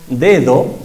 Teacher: la segunda d que está entre dos vocales la lengua está entre los dientes y deja escapar el aire en la primera hay una oclusión el aire está Atrapado ante